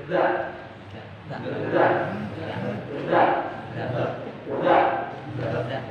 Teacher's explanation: Huruf dha dan dha ini keluar hurufnya dari ujung lidah dan ujung gigi dari sebelah atas.